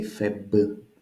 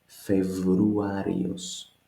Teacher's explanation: This B is too harsh for Greek, which is a southerner language. We make it more suave. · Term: The B turns to V